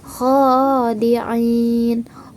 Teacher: Kho tersebut ialah berfathah berdiri, maka dibaca dengan 1 alif, 2 harokat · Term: mad tabi'i